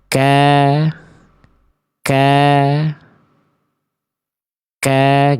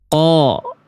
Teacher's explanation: Jadi bunyi tebal yang kita cari, yang kita kenal huruf tebal itu karena vokal O, ternyata tebalnya itu tetap bunyinya vokal A. Cuman dia terdengar lebih gemuk karena ada pangkal lidah yang naik, bukan karena memonyongkan mulut.